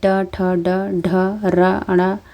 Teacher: कठोर भाग मुर्धा से उच्चारण किए जाते हैं इनमें ट ठ ड ढ र ण अंगण है मुर्धन्य अल्प्राण